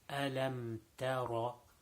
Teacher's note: So in the second word, most common mistake is people read the ta like a ta, and they don't make the ra full mouth. So this is the characteristic of ra with a fatha, with a zabar, that it should be pronounced with a full mouth. So ta ra, ta is not full mouth, so it should not be pronounced tara.